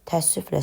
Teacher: Ənin biri düşür, digəri də uzun tələffüz olunur. Yəni axırdakı ədə eyni səsi verir.